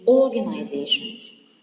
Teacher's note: Organizations is stressed also in the second before the end. It is the penultimate syllable.